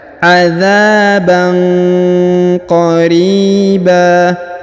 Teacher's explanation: Huruf ba tanwin ya. Tanwin bertemu dengan huruf qa, maka didengungkan dan disamarkan